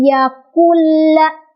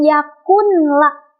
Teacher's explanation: langsung ke lamnya tanpa ditahan atau tanpa didengungkan. Jadi jangan yakul, jangan ya, yakulla langsung.